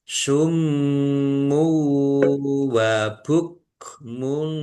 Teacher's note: Summu wa bukmun. Mim tasdid dibaca ghunah atau mendengung. Ditahan biar tampak mendengungnya. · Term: gunnah